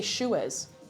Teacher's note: what you get a lot is um an extra vowel in the middle